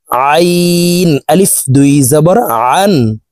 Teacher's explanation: আইন হরফকে হালুকের মধ্যখান থেকে উচ্চারণ করে পড়বো কারণ আইনের মাখরাজ হালুকের মধ্যখান থেকে হবে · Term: আইন হরফের উচ্চারণ